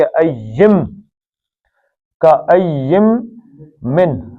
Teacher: نون ساکن کے بعد میم آ جائے تو نون پڑھتے ہیں، کیا پڑھتے ہیں؟ میم پڑھتے ہیں۔ کہ ین نہیں پڑھیں گے، کہ ایم، کا ایم من۔